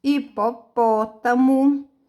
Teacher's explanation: Hipopótamo é acentuado no pó. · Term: antepenúltima sílaba